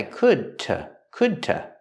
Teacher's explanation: the D at the end of could is a stop D